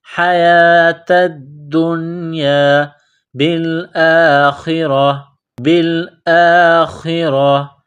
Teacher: حیات الدنیا، تا کو دال کے ساتھ ملانا ہے، دال میں سختی کرنی ہے، دال کو نون کے ساتھ ملائیں گے، حیات الدنیا بالآخرہ، بالآخرہ، کڑا زبر ہے، ایک الف کے لمٹ میں کھینچنا ہے، خا کو موٹا کرنا ہے، را کے اوپر زبر ہے، را کو موٹا کریں گے